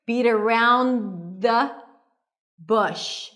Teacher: The TH is really small here because it's a function word.